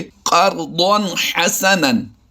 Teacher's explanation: दो ज़बर की तनवीन के बाद हा हुरूफ हल्की से आया है तो यहाँ पर भी हमने इजहार करके पढ़ना है।